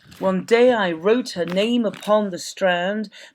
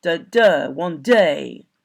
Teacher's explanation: it's a kind of reggae rhythm and the stress is on the second one the upbeat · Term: stressed and unstressed syllables